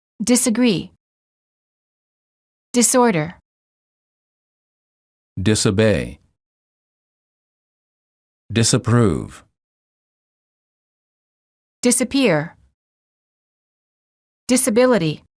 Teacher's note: The S in the prefix dis is pronounced as S and not as Z.